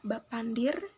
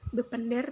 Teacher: bahwa dalam dialek pola ini masih menggunakan huruf vokal e&o sedangkan dalam dialek hulu huruf vokal e&o digantikan dengan a